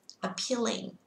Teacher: Âm thứ hai sẽ nhận trọng âm nên các bạn sẽ kéo ra một chút xíu ạ.